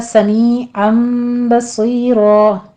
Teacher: می اور سی دونوں جگہوں پہ یائے مدہ ہے، 2 کاؤنٹ کریں گے